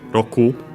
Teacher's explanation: an accent on the last mora on its own